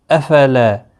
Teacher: اس کو ایک الف کے برابر کھینچنا ہے لا کو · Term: الف مدہ